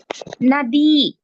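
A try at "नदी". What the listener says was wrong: Very good. You have to say the dirgha there.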